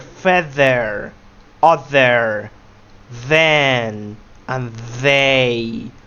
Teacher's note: Notice how your throat vibrates whenever you pronounce they. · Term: voiced TH sound